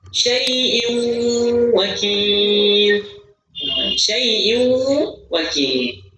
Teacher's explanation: Ketika tanwin ketemu huruf waw, mulut mulut. Tidak dibaca tanwinnya, langsung masuk huruf waw. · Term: idgham di gunnah